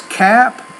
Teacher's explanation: when the p is at the end of the word because the P's a voiceless consonant the vowel which precedes it should be shorter